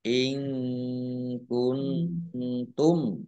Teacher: Nun sukun bertemu dengan huruf tak juga bacaan ikhfa. Dibaca panjang, dibaca samar-samar.